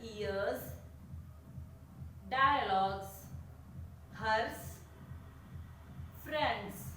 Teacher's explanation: all of these also ends in the letter S but with the Z sound.